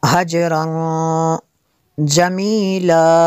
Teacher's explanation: تنوین کے بعد جیم ہے حروف اخفا میں سے، تو یہاں پہ اخفا ہوگا اس لیے یہاں پہ غنہ کریں گے۔